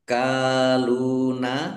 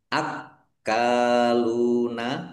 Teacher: Lil kadibi harusnya ada alifnya, alif lam, komariah ditandai lamnya dibaca sukun. Akaluna, kafnya dibaca double, ada tasdidnya, ya ditekan biar tampak doublenya